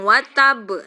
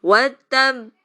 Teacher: Jadi diwakofkan dan bertasdid. Itu ada jeda karena tasdid itu kan ditekan. Makanya ditekan seperti berhenti baru mantul. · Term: qalqalah kubro